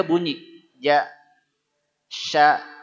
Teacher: Tengah lidah inginnya dia naik ke atas